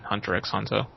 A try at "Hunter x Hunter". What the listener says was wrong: Hunter x Hunter does not deserve that, and by the way, we should not pronounce the X.